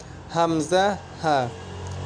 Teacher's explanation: এক নাম্বার মাখরাজ হলকের শুরু হইতে হামজা হা